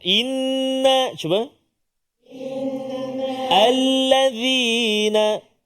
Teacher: Inna 1 2 harakat wajib al-gunnah.